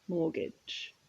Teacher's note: And the pronunciation, you'll notice the T is silent.